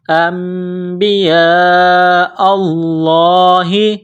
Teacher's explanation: یہ لمبی مد ہے، 4 الف کے لمٹ میں کھینچنا ہے، لفظ اللہ کے نام سے پہلے زبر ہے، لفظ اللہ کے نام کو موٹا کرنا ہے